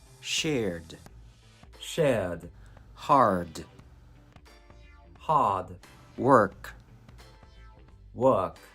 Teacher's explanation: for the british accent the r is omitted meaning the tongue is relaxed